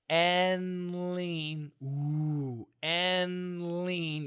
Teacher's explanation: the N and the L dark L can be the same position and lean and lean yeah same tongue position or I could